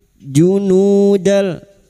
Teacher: Junudal fathah tanwin bertemu lam nun sukun atau tanwin yang bertemu dengan dua huruf yaitu huruf lam atau ro masuk tanpa mendengung. Masuk pada huruf lam tanpa mendengung. Junudal idgham bila gunah.